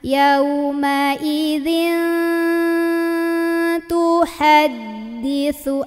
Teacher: Nah, ini tanwin kalau ketemu ta sama. Bunyinya itu sudah samar-samar ke huruf ta ya. Sambil dengung, sambil nahan.